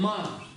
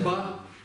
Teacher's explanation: Когда мы произносим ма, она губная, и в то же время идет в нос. А если произнесем ба, у нас в нос не идет воздух, там просто она губная. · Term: носовые